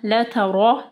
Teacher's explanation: را کو ہیوی پڑھنا ہے، را کے اوپر جو ہے زبر ہے